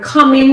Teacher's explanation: i've got another word [Music] a different one [Music] okay so the word common has two syllables the stress is on the first syllable it's on cup yes uh the first sound is the uh